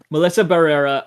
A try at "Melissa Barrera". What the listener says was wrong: She's Spanish, bro. Roll them R's.